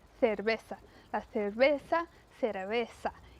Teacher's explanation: o espanhol da Espanha é muito característico pelo som do C e do Z. Ele é pronunciado como quase o TH do inglês. Então isso é bem diferente aqui pra gente, comparando com o espanhol da América Latina.